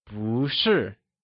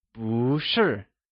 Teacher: when bù is used with another fourth tone, it changes to second tone!